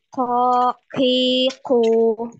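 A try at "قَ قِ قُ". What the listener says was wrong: Ah, pas masuk di qaqiqu itu jadi maju lagi anti. Maju lagi makhrajnya. Jadi sama tempatnya itu di tempat ketika anti mengucapkan lafaz mustaqim. Mustaqim di situ.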